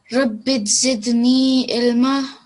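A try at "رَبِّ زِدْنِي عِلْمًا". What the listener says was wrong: So that one needs to be prolonged. Rabbi zidni ilma.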